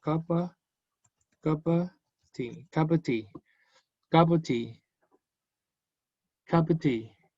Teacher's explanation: Cup es relevante, tea igual, of no mucho.